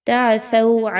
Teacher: ثو سین کی طرح یا صاد کی طرح نہیں پڑھنا، بہت نرمی کے ساتھ اچھے طریقے سے ادا کیجئے